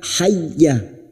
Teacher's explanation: Hanya masuk tanpa ditahan, tanpa mendengung.